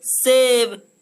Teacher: जब हम इसका उच्चारण करते हैं तो हमारी जो जीभ होती है दोस्तों वो दांतों को स्पर्श करती है, इसलिए इस स को दंते स कहते हैं।